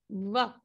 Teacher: यस, जब हम व कहते हैं तो हमारे फ्रंट के अपर teeth, upper part of our teeth touches the lower part of our lip